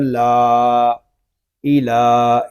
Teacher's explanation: لام کو ہم ایک الف تک کھینچ کر پڑھیں گے کیونکہ یہاں پہ کھڑا زبر آ رہا ہے، اور کھڑا زبر الف مدہ کے قائم مقام ہے۔